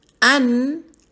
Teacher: اس نون کی آواز کو ہم نے جو ہے وہ ناک سے میں لے کے جانا ہے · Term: اخفا